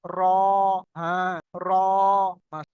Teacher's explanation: এটা জিভের আগা, এটা হলো উল্টা পিঠ, নিচের দিকটা। জিভের আগার উল্টা পিঠ এবং তার বরাবর উপরের তালুর সাথে লাগিয়ে উচ্চারিত হয় র। দেখেন উচ্চারণ করে, একটুখানি হালকা টাচ হবে উল্টা দিকে, জিভের উল্টা দিকে, তার এবারে উপরের তালুর সাথে লাগিয়ে উচ্চারিত হবে র।